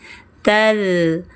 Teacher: ujung lidah pada gigi seri atas, sama dengan tsani